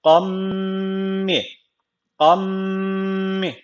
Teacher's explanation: şöyle okuyacağız gunneli bir şekilde katacağız yani E şöyle kammi kammi bir elif miktarı böyle dudaktan tutuyorum yani gunne yapıyorum